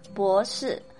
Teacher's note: Note that it is not bo, it is bo, as if there's a kind of W sound in between